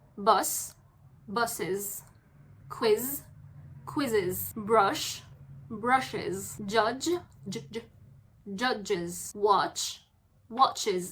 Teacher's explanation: we add an extra syllable which is the s. So we need to add a tiny vowel. And since vowels ends with a buzzing sound, so it's going to be z at the end.